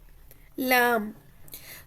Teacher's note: जुबान का किनारा और ऊपर के दांतों के मसूड़ों से लगे तो लाम अदा होता है